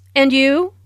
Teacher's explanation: Notice the rising intonation on and you.